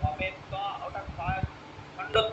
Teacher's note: জোরে পড়ুন >> ভবেত ভবেতাম ভবেয়ু >> না ভবে বলছেন কেন ভবেত আছে মানে ত এর অর্ধেক উচ্চারণ ভবে বলা যাবে না